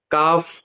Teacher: काफ जबान की जड़ और तालू के सख्त हिस्से से अदा होता है